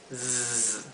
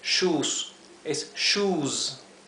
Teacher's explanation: cuando la S se encuentra al final y está precedida por una vocal, como es este caso y muchos otros más, la S se pronuncia fuerte, con el zumbido